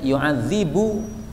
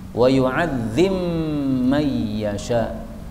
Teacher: ba-nya boleh idgham kepada mim